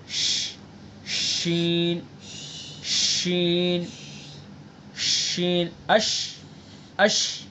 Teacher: शीन के अदा करते वक्त आवाज का मुंह में फैलना